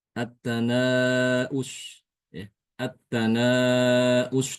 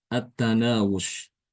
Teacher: Attanaus dibaca empat harakat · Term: mad muttasil